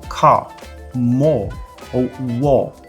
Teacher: na variante britânica, esse R no final das palavras, ele não existe. Então, essas mesmas palavras seriam pronunciadas como car, more, ou war.